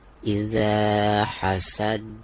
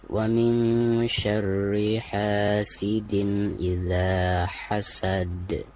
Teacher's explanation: Perhatikan di ujung bacaan ini adalah huruf qalqalah ya, yaitu dal. Maka ketika diwakofkan suara dal tersebut harus dipantulkan, bahkan harus dipantulkan dengan suara yang lebih jelas, lebih besar ya, karena dihukumi qalqalah kubro.